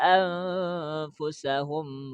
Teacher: Tekankan sedikit, sama-samarkan disertai dengan dengung. Itu namanya ikhfa, ya.